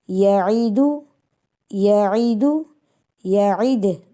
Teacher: دیکھیے بیٹا بیچ میں عین آ رہا ہے، عین کی آواز درمیانی حلق سے نکلتی ہے